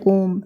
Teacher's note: ओम जो होता है वो क्या होता है आपका प्लुत स्वर में आता है इसमें बहुत ज्यादा समय लगता है बोलने में